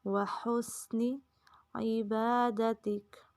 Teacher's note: وحسنی نون کو لمبا نہیں ہونے دینا